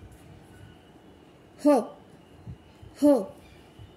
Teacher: ह ह मध्ये हिसका खाल्ल्यासारखं होतं, त्यामुळे याला महाप्राण असं म्हणतात